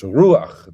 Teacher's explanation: The accent is on the U, and it's just a short A, and the A is written to the right of the chet, not straight underneath it. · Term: patach furtivum